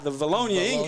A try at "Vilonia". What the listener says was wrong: Vilonia. It's not Vilonia. It's Vilonia. Vilonia. Got to get a "ya" in it.